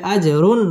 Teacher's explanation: জিম কলকলার হরফ ধাক্কা দিয়ে পড়তে হবে